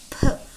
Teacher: P, remember, is a voiceless bilabial sound. P. Also remember that P has an extra plosiveness in it.